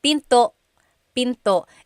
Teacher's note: Don't forget to stop the sound at the end. That's called a glottal stop.